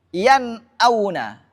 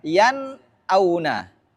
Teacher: Bunyi nun sukun di sini bunyi n. Sama kadarnya dengan pengucapan a. Artinya satu harakat a, n. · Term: idhar halqa